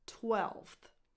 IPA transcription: twɛlfθ